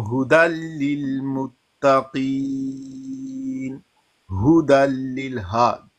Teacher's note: جب قاف کے نیچے زیر ہو نا تو تھوڑا مفخم کم پڑھنا ہے